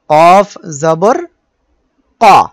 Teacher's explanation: কফ জবর ক এর ভিতরে আকার নেই অর্থাৎ অকার ধ্বনি